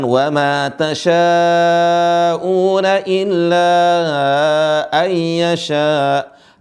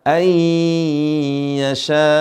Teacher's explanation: Perhatikan di sini, nun mati bertemu dengan ya ditahan